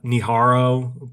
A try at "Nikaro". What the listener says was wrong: Nikaro. It's pronounced Nikaro. Nikaro. Nikaro. There's no H.